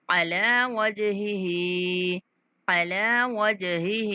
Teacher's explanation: جیم پر کلکلا کرنا ہے اور دوسرا ہا جو ہے اس کو کھینچ کے پڑھیں گے 3 سیکنڈ تک